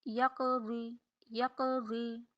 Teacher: درمیان میں کلکلا ہم نے جب کرنا ہے تو یہ چھوٹا کلکلا ہوگا